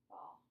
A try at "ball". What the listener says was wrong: Oh, trying to move your head. So your lips kind of aren't all the way together. So ball.